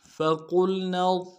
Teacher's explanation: فا کو نرم سے ادا کرنا ہے، قاف کو موٹا کریں گے، لام کے ساتھ ملانا ہے، اور نون کو آگے ضاد کے ساتھ ملائیں گے، ضاد کو موٹا کریں گے۔